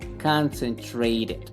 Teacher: la t cuando está entre vocales la vamos a pronunciar como una r